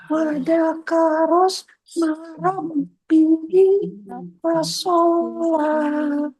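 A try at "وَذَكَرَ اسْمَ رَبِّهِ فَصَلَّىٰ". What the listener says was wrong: coba lagi Bu di sinnya, sin sukunnya. Wadakaros marabbihi.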